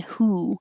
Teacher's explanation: your tongue is higher in the back and the lips are rounded